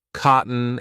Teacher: this is when I'm replacing t with the glottal stop